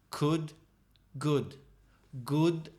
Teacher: good has the vibration could doesn't have the vibration